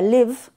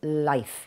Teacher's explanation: que es una I corta y su sustantivo equivalente que es life que lleva dictongo